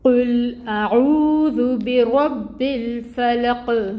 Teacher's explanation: قاف کے نیچے زیر ہے لیکن کیونکہ وقف ہے تو ہم یہاں پہ اس کو ساکن کر دیں گے، وقف کی وجہ سے یہ حرکت ختم ہو جائے گی۔ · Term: قلقلہ